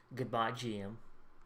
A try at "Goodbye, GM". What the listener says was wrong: Bro, careful how you say that. It sounded like you said goodbye, Jim. Like I'm not fucking deaf, right? Like I heard that. I know you said GM, but like goodbye, GM.